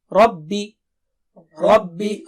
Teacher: را موٹا ہے رائٹ اور با باریک ہے